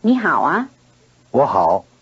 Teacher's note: A low tone changes into a rising tone before another low tone.